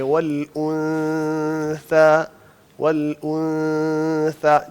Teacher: جو اس کے بعد سا آ رہا ہے تو ہم منہ کو تقریباً ویسے ہی بنائیں گے جیسے ہم سا نکالنے والے ہیں, لیکن سا نکالیں گے نہیں, ہم نون کو چھپائے رکھیں گے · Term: اخفاء کی آواز